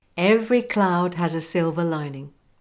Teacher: Copy me with a linking between the S in has and the word a.